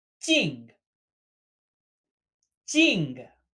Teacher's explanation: Similar to I, but with a falling tone.